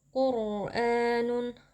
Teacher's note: ro dibaca dengan tafkhim atau dengan tebal karena rnya di sini sukun sebelumnya berharakat damah huruf q ya di belakangnya juga itu kita baca tebal ya